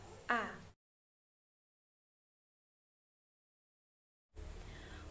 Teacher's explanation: Bunyi kedua pada kata salsabila merupakan bunyi A. Bunyi vokal A memiliki tinggi rendah lidah rendah bawah, gerak lidah bagian depan, struktur terbuka, bentuk bibir tak bulat.